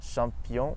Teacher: In English the ch makes a ch sound but in French it's always shh like in the word bush or shingle.